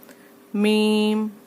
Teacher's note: मीम दोनों होठों के खुश्क हिस्से से